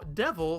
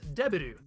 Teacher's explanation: there is no V sound in Japanese. B is used in its place. Because of that, we can see how devil becomes debiru through this system of approximation.